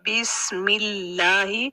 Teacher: اللہ سے پہلے جو میم ہے اس کی زیر کے ساتھ اللہ کو ملا رہے ہیں ملہ، اس لیے وہاں ہم اس کو باریک رکھیں گے